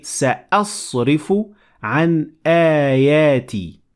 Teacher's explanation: So we say سأصرف عن آياتي. We extend it a little bit longer when it is followed by the long vowel alif.